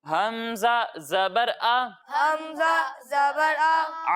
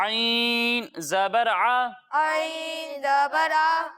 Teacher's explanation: हमजा की अदायगी हलक के निचले हिस्से से होती है। और जब हम आइन की अदायगी करेंगे तो इसे हलक के दरमियाने हिस्से से पढ़ेंगे।